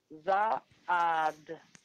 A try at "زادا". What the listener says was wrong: زادا. There is no vowel on alif. زادا. So alif is silent here.